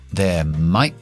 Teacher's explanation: Cierro los labios, pero no exploto la B. Paro. There might. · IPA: /ðeə maɪʔ bi/